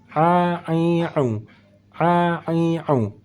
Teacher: saat kita membaca huruf Ain letak makhrajnya juga di bagian tengah kerongkongan